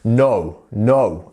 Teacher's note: We lengthen that O sound. So no, no. And we kind of make it and then we stop it quite quickly. So no. So no, thank you.